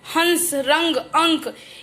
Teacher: ये जो बिंदी है जब ये लग जाती है तो इसको हम बोलने के लिए नाक से हमारी हवा निकलती है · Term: अनुस्वार